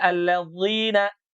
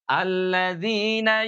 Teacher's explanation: Mung kade ulah tarik bilih nyeri alladina tidak diangkat bagian pangkal lidahnya dan permukaan lidahnya sehingga terdengar menebal seperti huruf D. Tidak allina tapi ringan saja hanya ujung lidah yang menukik ke bawah. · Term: huruf dalal